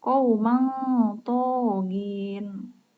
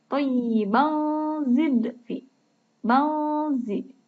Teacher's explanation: Kalau kalian perhatikan, semuanya dibaca eng, seperti berdengung ya. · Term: ikhfa